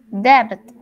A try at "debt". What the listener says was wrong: Debt. Remember, you have to say only debt. Like if it was written D-E-T, not with a B. Debt. You say debt. Only debt.